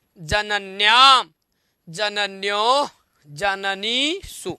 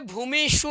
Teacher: किंतु अब दीर्घ इकार है यहाँ, तो दीर्घ इकार के बाद मूर्धन शकार ना होके यहाँ दंत सकार हो जाएगा